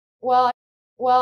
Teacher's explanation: we tend to kind of swallow or lose the end of that word when we use it like this at the beginning of a sentence